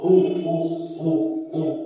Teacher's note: উ বলার সময় একদম ঠোঁটটা গোল